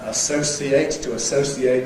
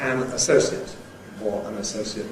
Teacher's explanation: the verb has [ -eɪt ] and the adjective has [ ət ], or some speakers [ ɪt ].